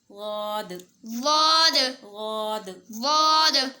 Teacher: نہ زواد کرنا ہے نہ دواد کرنا ہے، ہم نے اس کے درمیان والی آواز نکال کے اس کو پڑھنا ہے